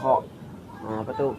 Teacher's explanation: Nah, di sini kha ujung tenggorokan. Kha ini memiliki sifat nafas berhembus, lunak, dan suaranya tidak tertahan atau disebut juga dengan rokhawah.